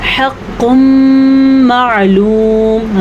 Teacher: ہم نے غنہ کیا ہے کیونکہ ادغام کی جو یہ قسم ہے یہ غنے کے ساتھ ہے